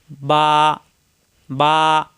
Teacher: মিম ওয়াও উচ্চারণের সময় দুই ঠোঁট একত্র হবে না ওয়াও বা দুই ঠোঁট একত্র মিলানোর ঠোঁট ছেড়ে দিলে হয়ে যায় বা